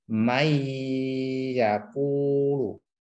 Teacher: Bi gunnah yaitu dimasukkan ke huruf setelah nun ya, atau tanwin, harokat tanwin, kemudian ditahan. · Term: idgham bi gunnah